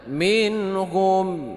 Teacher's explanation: nun mati bertemu dengan Ha ini izhar Hakiki dibaca tidak berdengung